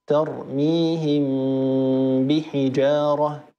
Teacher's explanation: والميم تخفى بغنة إذا أتى بعدها حرف واحد وهو الباء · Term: الإخفاء